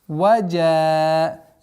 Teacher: Здесь удлинение в размере 4 огласовок.